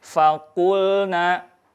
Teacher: maka pastikan membacanya fa ya. Jadi mengalirkan nafasnya. Fakulna, tidak fakulna.